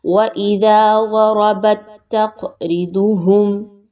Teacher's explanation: قاف کے اوپر قلقلہ کیجئے، قاف کو تھوڑا سا ہلائیے